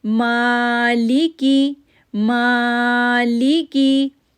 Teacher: میم کو کھینچا کھڑی زبر کی وجہ سے